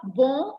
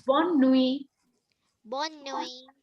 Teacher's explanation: the feminine, the n is very strongly pronounced. So it's bonne nuit.